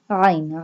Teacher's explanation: Ain pronounced from the middle part of throat.